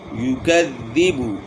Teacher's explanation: الذی ارأیت الذی یکذب، ذال مشدد ہے تو کاف کو ذال کے ساتھ ملائیں گے تو ذال میں تھوڑی آواز کی سختی آئے گی. یکذب، پیش میں ہونٹ گول کریں گے، پیش کو مجہول نہیں پڑھنا اور جھٹکا بھی نہیں رہنا